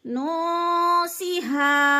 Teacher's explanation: نون پہ اخفا ہو رہا ہے، نون ساکن کے بعد سین حروف اخفا میں سے ہے تو ادھر اخفا کریں گے بلکہ اظہار نہیں کریں گے، یعنی ناک میں آواز لے جائیں گے، چھپا کر لفظ کو پڑھیں گے۔